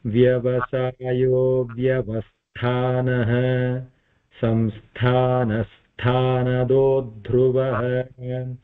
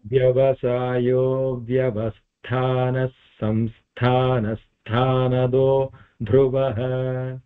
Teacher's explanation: samsthanasthanado dhruvah if we want to say it in one go the visarga will combine with the following sa and becomes a double sa but we are giving a pause there so that's why I'm